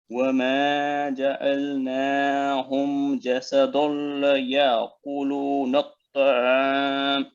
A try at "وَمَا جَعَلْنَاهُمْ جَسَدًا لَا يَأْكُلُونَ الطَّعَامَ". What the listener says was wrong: ٹھہریں، جیسا دل، ایک تو دال کو آپ نے پر کر دیا، موٹا کر دیا، پھر دلہ، جیسا دلہ، اتنے بولیں، جیسا دلہ، لیکن نا لام کے ساتھ الف ہے نا آگے حروف مدیہ میں سے، تو دال موٹا لفظ میں بریک پڑنے والا ہے، دلہ، ٹھیک ہے؟